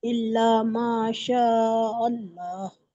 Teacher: इल्ला मा, मीम पर भी अलिफ मद्दा हो रहा है। शीन पर ज़बर की हरकत है, जल्दी पढ़ेंगे। और अलिफ पर मद्द मुंतसिल हो रहा है। और हमजा को लाम से मिलाकर पढ़ेंगे और 2 बार पढ़ेंगे।